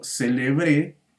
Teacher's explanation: se escucha que la última sílaba es la sílaba tónica en esta palabra